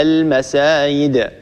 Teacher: من الأخطاء قلبها ياء، يعني أن نقلب الجيم ياء وأن نبدل الجيم ياء